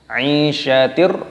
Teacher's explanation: ro-nya panjangkan, ada tanda alifnya mat tabi'i, 2 ketukan